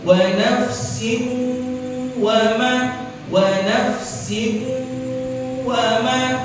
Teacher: Nah, ini kita baca dengung. Karena di idgham bil gunnah, tanwin bertemu dengan waw. Jadi dibaca dengung.